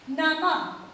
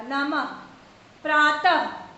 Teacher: इसका उच्चारण करते समय हा ध्वनि आपको ज्यादा सुनाई देगी या इसका उच्चारण हा की तरह होता है। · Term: विसर्ग